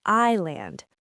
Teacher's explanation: Again, that s is silent, completely gone, vanished into thin air.